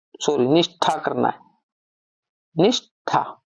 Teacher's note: स हमारा कौन सा आ गया दंत्य, उसका क्या हो जाएगा मूर्धन्य हो जाएगा, और था का ठा हो जाएगा। निष्ठा करना है, निष्ठा, इस प्रकार बन जाएगा।